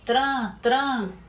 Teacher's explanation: O som do N está saindo pelo nariz. Então, esse som está nasalizado. Quando o som sai pelo nariz, está nasalizado. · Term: som nasalizado